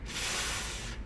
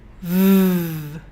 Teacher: And if you put 3 fingers over this area, and if you say f, you can't feel anything here. But if you say v, you can feel the vibrating of your vocal cords just on the tips of your fingers here. · In order to change the f sound into a v sound, you have to add the voice. So this is where your voice is made. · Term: with the voice